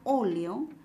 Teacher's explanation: Observando la primera alternativa, cuando silabeamos, ¿no?, la palabra óleo, la sílaba tónica está en la antepenúltima sílaba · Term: esdrújula